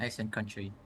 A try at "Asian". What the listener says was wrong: Asian, didn't quite hear the zh. Maybe he just mispronounces the word Asia and he mispronounced it as Asia. An Asian country with a zh.